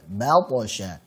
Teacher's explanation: Hati-hati, ba tipis, ta tebal.